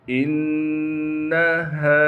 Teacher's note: حمزہ کو نون سے ملائیں گے کیونکہ نون پر تشدید ہے۔ تشدید ہونے کی وجہ سے نون میں غنہ کیا جائے گا یعنی ناک میں آواز کو لے کر جائیں گے۔ ہاں کو صاف کر کے ادا کرنا ہے۔ · ہاں کے بعد الف مدہ ہونے کی وجہ سے ہاں کو ایک الف کی مقدار کھینچیں گے